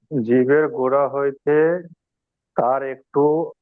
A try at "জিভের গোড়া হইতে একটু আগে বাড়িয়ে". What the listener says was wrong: তার তার একটু আগে এরকম বলতে হবে না,